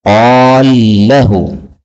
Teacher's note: Dan di sini ada lam ketemu lam, qala lahu. Maka lamnya boleh diidghamkan menjadi qalahu